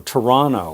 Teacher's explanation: I just said my hometown Toronto Toronto we don't say Toronto we omit all the t's after the consonant N